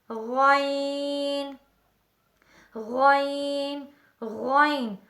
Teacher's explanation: حلق منہ کی طرف والا حصہ اسے ادنی حلق کہتے ہیں، یعنی ادنی حلق سے ادا ہوتا ہے